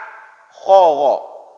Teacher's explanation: Naik ke atas ke ujung tenggorokan, keluar 2 huruf juga, kha dan ghin, ya. Kha dan ghin.